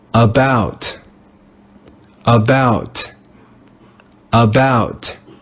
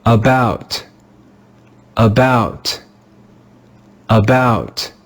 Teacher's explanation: Do you hear that the first syllable is not stressed?